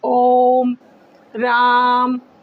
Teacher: इसको बोलने में 3 मात्राओं का समय लगता है, ये त्रिमात्रिक भी कहलाता है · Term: प्लुत वर्ण